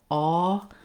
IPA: ɔ